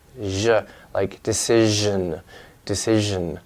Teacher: So we have the she and then the zha, which is just like the sh and she, but with voicing.